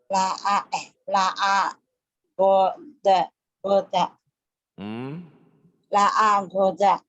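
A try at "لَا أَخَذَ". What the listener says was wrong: La akhoda. Bukan la agoda ya, la akhoda.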